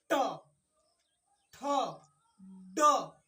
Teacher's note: जो अगला नोक है जो आगे की जो जीभ होती है जीभ का जो पतला सा भाग सामने वाला होता है वो हल्का सा मुड़ जाए और जब मुड़ जाए तो आप जान लीजिए कि ऐसे व्यंजन · ऐसे व्यंजन जब हमारी जीभ मुड़ेगी तो उस कंडीशन में मूर्धा व्यंजन होगा। · तो जब कंडीशन हमारा बोलने का हो और उस समय आप ध्यान दीजिए, अपने दिमाग को ले जाइए अपने जीभ के पास कि मेरा जीभ किस कंडीशन में है, तो जीभ हल्का सा मुड़ी हुई महसूस होती है, और जब मुड़ी हुई महसूस होगी तो उस कंडीशन में ऐसे व्यंजन को हम कह सकते हैं कि यह मूर्धा व्यंजन है।